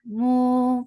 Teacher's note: Mu for the circle lips, make it two counts long.